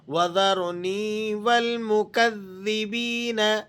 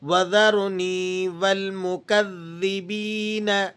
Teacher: یا ساکنہ ما قبل مکسور، تو ایسی یا کو یا مدہ کہتے ہیں، اسے آپ نے 1-2 سیکنڈ کھینچ کر پڑھنا ہوتا ہے۔